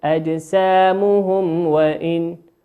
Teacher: الميم التي في آخر كلمة أجسامهم هي ميم ساكنة أتى بعدها حرف الواو، والواو من حروف الإظهار الشفوي